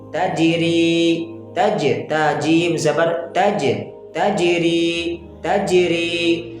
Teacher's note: تو اب یہاں پر جو قلقلہ ہو رہا ہے وہ قلقلہ صغرا ہے یعنی چھوٹا قلقلہ ہے